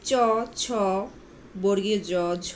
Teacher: প ফৃষ্ট ধ্বনি চ ছ বর্গীয় জ ঝ এই ধ্বনিগুলোর উচ্চারণকালে জিহবা বা তালু স্পর্শের পর পরেই উভয়ের মধ্যে বায়ুর ঘর্ষণজাত ধ্বনি সৃষ্টি হয় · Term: ঘৃষ্ট ধ্বনি